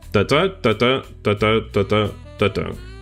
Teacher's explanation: So you have five metric feed which are amic which has has a a rhythm of unstressed syllable followed by a stress syllable